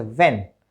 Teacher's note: अपर teeth lower lip के साथ contact में आते हैं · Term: वे साउंड